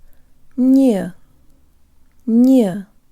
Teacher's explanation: tongue behind the bottom teeth lip surrounded and protruded Nia Nia there's almost a slight Y sound built in